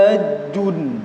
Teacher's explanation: Ha tempat keluarnya di tenggorokan bagian tengah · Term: huruf ha